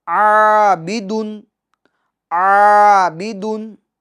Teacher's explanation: عین کے الف کو ہم کیا کریں گے؟ باریک کریں گے